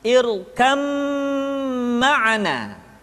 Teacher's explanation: Dibaca tidak irkam ma'ana tetapi irkam ma'ana, disertai dengan gunnah, ditahan, tidak boleh tergesa-gesa